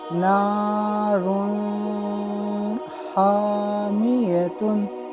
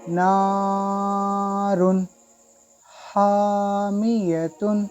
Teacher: अगर मैं एक बार इसको गुन्ना के साथ पढ़ के सुनाता हूँ, फ़र्क आप देखें, नारुन हामियतुन, इस तरह नहीं पढ़ना है, बग़ैर गुन्ने के पढ़ना है